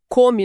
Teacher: Come no presente tem um som curto, fechado na garganta